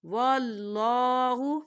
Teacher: اللہ کے نام سے پہلے اگر زبر آتا ہے تو اللہ کا جو نام ہے یہ تھوڑا موٹا پڑا جاتا ہے